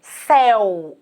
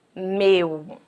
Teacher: Céu, a boca é aberta. Meu, a boquinha fecha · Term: ditongo aberto